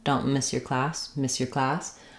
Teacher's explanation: So the S and the Y come together, but neither of them changes really because of that. So the S sound is a continuing sound.